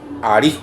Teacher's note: la segunda sílaba es tónica, o sea, es la que lleva el acento